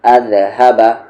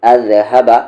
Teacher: سا کی بنسبت دال کے مخرج میں زبان کو آپ کو تھوڑا سا زیادہ کرنا ہے۔ جیسے یہاں پر اذهب، تھوڑا سا زیادہ، اذهب۔